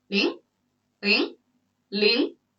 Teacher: we do the rising tone like you're making a question